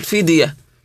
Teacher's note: هذه الاحرف ساكنه سواء كانت في وسط الكلمه او في اخرها فعندنا كلمه فديه الدال التي في وسطها ساكنه فلازم تقلقل فديه ام وعلى الذين الذين الذين يطيقونه فديه طعام مسكين فمن